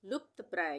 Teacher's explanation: आधे प का उच्चारण हो रहा है और ये त पूरा है, ये प आधा है और त पूरा है, तो लुप्त प्राय।